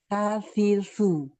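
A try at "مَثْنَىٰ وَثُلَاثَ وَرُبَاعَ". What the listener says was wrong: Nah, jadi lidah itu jangan terlalu kuat ditekan ke gigi seri atasnya. Sa, hanya menempel aja. Sa, sa, agar aliran suaranya lebih sempurna. Masna, wasulasa, waruba'.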